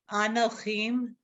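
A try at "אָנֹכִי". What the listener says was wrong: No, there's no mem. It's anochi.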